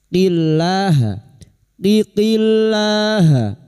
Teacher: lam jalalah yang didahului kasroh kita baca tarkik atau tipis. Qillaha, qiqillaha, la kita panjangkan 2 harokat.